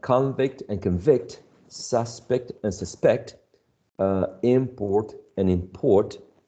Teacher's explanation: the lexical stress um is placed on the first syllable when it's a noun and on the second syllable when it's a verb